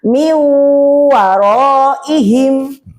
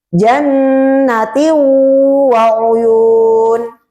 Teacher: Jadi di huruf-huruf idgham bighunah tersebut itu mendengung dan ada panjangnya satu alif.